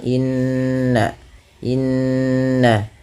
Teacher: pada lafal bunyi nun yang berharakat tasydid karena ia bacaan ghunah